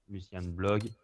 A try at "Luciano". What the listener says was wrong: Luciano. Luciano, pas Luciane. Luciane.